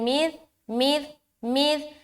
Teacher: सा को बगैर सीटी के निकालेंगे और नरमी के साथ अदा करेंगे। ये जो हर्फ सा है और ये हर्फ दाल दोनों नरमी के साथ बगैर सीटी के अदा होता है।